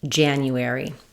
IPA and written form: ˈdʒænjuˌɛri (January)